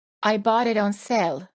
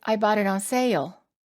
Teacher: the long a vowel sounds even longer because we add an extra a sound before the l